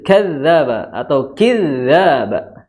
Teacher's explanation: Za itu di ujung lidah bertemu ujung gigi seri atas